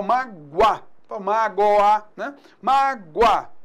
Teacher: Mágoa, semivogal U com vogal A. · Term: ditongo crescente